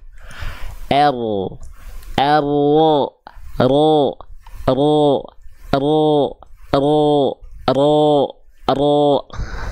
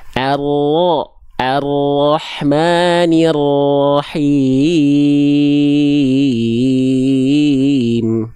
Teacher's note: ujung lidahnya enggak betul-betul nempel ya Oke tapi bagian punggung lidahnya kelihatan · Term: huruf ro